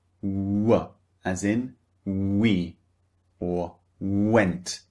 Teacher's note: They start very very rounded and then they become relaxed which means neutral